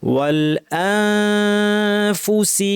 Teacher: পড়বো, আমরা ফা বলার জন্য ঠোঁট মুখ রেডি করে ফেলবো, অর্থাৎ দাঁতকে ঠোঁটের উপর এনে ফা বলার জন্য রেডি, নাক থেকে গুন্না । আমাকে দেখেন, ওয়াল পুরা লাগাবো না, ফুল চেপ প্রেশার দিব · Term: ইখফা